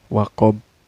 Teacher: Maka ini jelas ya hukumnya qalqalah kubro. Harus ada pantulan cara bacanya.